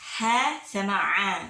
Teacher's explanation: Jadi ha sama a itu tenggorokan tengah